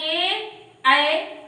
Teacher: ए और ऐ का उच्चारण स्थान कंठ और तालु दोनों ही होता है। इसीलिए ये कंठ और तालव्य वर्ण कहलाते हैं।